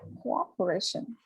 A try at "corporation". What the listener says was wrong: Pay much attention to or sound. You are making this mistake of the sound. Or like open the door.